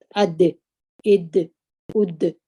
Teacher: اواز په زور د خولې څخه راوځي، هوا د خولې څخه نه راوځي، هوا جریان نه لري